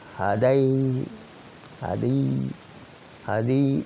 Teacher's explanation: دال کے نیچے بھی کسرے کی تھوڑی میلان ہوگی، اور الف کو بھی یا کی طرف میلان ہوگی. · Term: امالہ